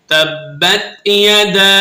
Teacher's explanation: تا با زبر تب، با تا زبر بت، تبت، یا زبر یا، دال الف زبر دا، الف مدہ اوپر چھوٹی مد ہے، مد منفصل 2.5 سے 3 الف کی مقدار میں آپ نے اسے کھینچ کر پڑھنا ہے